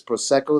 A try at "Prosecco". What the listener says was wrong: The wrong emphasis and the wrong syllable. Prosecco.